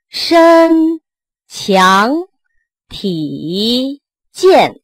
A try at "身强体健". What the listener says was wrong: 身 字 短 ， 身 身 不 是 身 ， 到 这 就 不 走 了 。